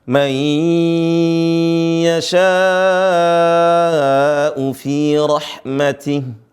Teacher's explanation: nun mati bertemu dengan Ya ditahan